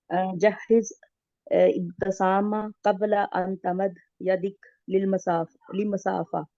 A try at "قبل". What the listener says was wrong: कबला. क्या पढ़ा है आपने इसको? हाँ قبل पढ़ना है, कबला नहीं पढ़ना है.